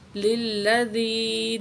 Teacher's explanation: زال کو نرمی کے ساتھ پڑھیں گے اور یا کے ساتھ ملائیں گے